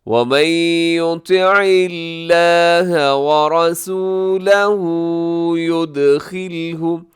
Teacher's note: را اس میں موٹا ہے اور آخر میں الٹی پیش ہے، تو آپ اسے تھوڑا سا لمبا کر کے کھینچ کے پڑھیں گے